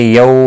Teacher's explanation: واولین ہے، تھوڑا نرمی کے ساتھ کھینچ کر ادا کریں گے۔